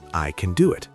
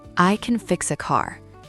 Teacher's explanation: In American English, when we say I can do it, the word can is usually very fast and weak.